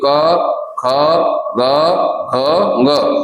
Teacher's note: ऐसे उंगली रखिए दोनों यहां पर ये जो जिसे कौवा कहते हैं या कुछ भी आप अपने यहां कहते हो यहां ऐसे उंगली रखिए और आप बोलिए क ख ग ख ग तो ख के बाद जिसे ग बोलते हो तो ग में यहां झन्नाहट ज्यादा होती है। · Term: सघोष व्यंजन